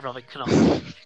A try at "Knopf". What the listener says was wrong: The K is silent.